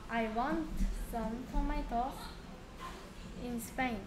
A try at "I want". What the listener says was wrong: went가 아니고 want잖아. went는 고의 과거예요.